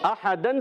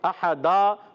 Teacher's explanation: دو زبر کی تنوین کو وقف میں الف سے بدل دیں گے، کہیں گے وقف بالابدال، مع الالف، گڈ۔